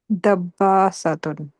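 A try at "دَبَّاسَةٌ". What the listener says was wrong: Good. Dabbasatun.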